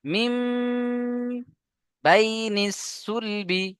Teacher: তানবিন ও নুন সাকিনের পরে যদি বা আসে, তাহলে ছোট মিমের দ্বারা পরিবর্তন করে একালিফ গুন্না সহ পড়তে হয়। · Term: ইকলাব